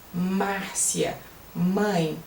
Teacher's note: M em português é bilabial. Você usa os 2 lábios para falar Márcia, mãe.